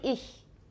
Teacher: voiceless palatal fricative occur in German